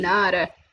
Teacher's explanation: Nada, linking together with that flap T.